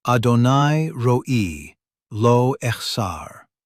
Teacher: Roll the R in ro. Feel it vibrate in your mouth.